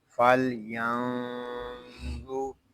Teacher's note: نون ساکن ہے، اس کو سکون کے ساتھ ادا کریں گے، نون ساکن کے بعد حرف اخفا میں سے ظا آ رہا ہے، یہاں اخفا بھی ہوگا